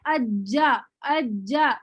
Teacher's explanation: क्या हुआ, जब हमने अज्जा अज्जा जीम पढ़ा, तो हमने महसूस किया कि जबान जो है तालु से पूरी तरह चिपक जाती है, और फिर बहुत मतलब सख्ती से चिपक कर फिर जो है वो आवाज निकलती है अज्जा, ठीक है।